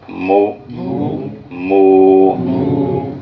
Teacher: اب یہ جو حرف ادا ہو رہے ہیں، تو ابھی ہم نے با کو، بے کو ادا کیے ہیں دونوں ہونٹوں کے تر کنارے، اب یہ میم ادا کر رہے ہیں دونوں ہونٹوں کے خشک کنارے، باہر والے کنارے